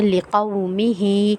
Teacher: آگے پڑھتے ہیں لِقَوْمِهِ، ہا کے نیچے کھڑی زیر ہے، کھڑی زیر کو ہم ایک الف کی مقدار کھینچ کے پڑھیں گے